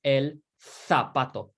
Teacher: And in Spain, they're going to pronounce this as el zapato. Zapato with like a th sound.